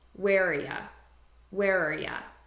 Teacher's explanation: where are ya where are ya so what i'm doing is i'm taking just the r sound and i'm reducing this to ya which is a very common reduction and i'm just combining these as one word where are yeah